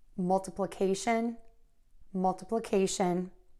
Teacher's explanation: a lot of people struggle with multiplication because we have so many schwa sounds in there so another tip for you is try to hum that word